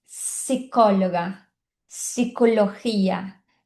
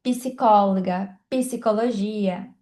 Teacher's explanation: E aí a única diferença que a gente vai ver da letra P é que quando a letra P está junto com a letra S, a gente não vai pronunciar a letra P. Então a gente diz psicóloga, psicologia, diferente do português, que é psicóloga, psicologia, né?